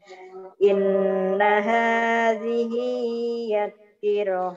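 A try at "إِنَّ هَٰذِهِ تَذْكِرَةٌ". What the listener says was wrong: Kok yad sih, ya Allah.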